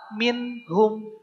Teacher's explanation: Sesuai dengan namanya izhar, jelas. Pengucapan nun sukun atau tanwin jelas. Bunyi N-nya harus jelas. Adalah ketika nun sukun atau tanwin bertemu dengan 6 huruf, yaitu A, H, A, H, G, dan Kh. · Minhum, tidak ming, tidak begitu, tapi minhum, jelas nun sukunnya.